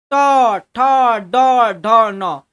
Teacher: ट ठ ड ढ ण ये जितना भी है इसका उच्चारण स्थान जो है ना वो मुर्दा से आता है